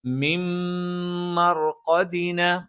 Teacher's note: ഈ നൂനിന് ശേഷമുള്ള മീമിലേക്ക് ഇദ്ഗാം ചെയ്യും, ചേർത്ത് വായിക്കും, മണിച്ചുച്ചരിക്കണം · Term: ഇദ്ഗാമും ബിഗുന്നയാണ്